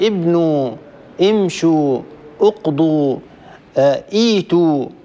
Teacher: لمجانسة واو الجماعة هذا ضم الحرف الذي قبله، لأنه من الصعوبة أن أقول مثلا أقول امشوا أو اقضوا أو مثلا مثلا ابنوا، يعني أكسر الحرف الثالث وبعده واو جماعة، فيه ثقل وفيه صعوبة. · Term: ضمة غير أصلية